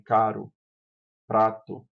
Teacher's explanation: O som do R apresenta uma oclusão percebida como uma batida bastante rápida da ponta da língua nos alvéldos. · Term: vibrante simples